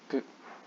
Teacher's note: You're not supposed to pronounce the inherent o sound. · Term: Hasonto